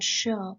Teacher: the front part of the tongue touches the back side of your alveolar ridge and front part of your heart palate so as i already